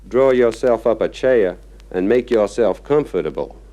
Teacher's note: soften the letter R so that it almost disappears, except before vowels.